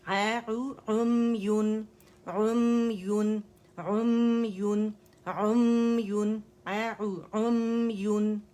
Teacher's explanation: میم پہ رکنا نہیں ہے، جسٹ 1 کاؤنٹ کے لیے جانا ہے، پورے خشک سے آپس میں ملانے.